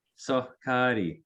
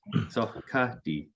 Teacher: So it's a little bit pre-aspirated.